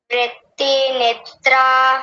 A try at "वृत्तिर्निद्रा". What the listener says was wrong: वृत्तिर, देखिए वृत्ति के बाद वो ऊपर रेफ आ रहा है, र आ रहा है, उसको भी साथ में बोल देंगे। वृत्तिर निद्रा।